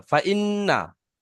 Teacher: এ টান হয়ে যাচ্ছে, ফা টান হবে না